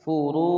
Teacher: Yak furu fa'fu ya, furu ro berharokat dhamma dibaca tebal, kemudian ada wawu sukun sebelumnya dhamma, hukum bacaan matobi'i dibaca panjang dua harokat.